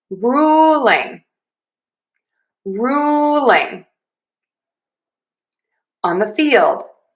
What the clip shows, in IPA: ˈruː.lɪŋ ɑn ðə fiːld